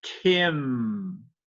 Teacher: Então, e ainda assim, eu não aspirei. Então, eu tenho que aspirar. Eu tenho que falar Kim.